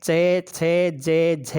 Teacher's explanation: जिनको हम शुद्ध तालु में पढ़कर कहे हैं च छ ज झ ये जो तालव्य वर्ण हैं, इनको ही भोलानाथ तिवारी जी ने कठोर तालव्य वर्ण कह करके पुकारा है।